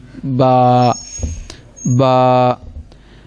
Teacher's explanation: با، دونوں ہونٹوں کے تر حصہ، یہ بھی با، با۔